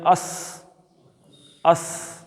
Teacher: اب سین سے سیٹی کی آواز نکلتی ہے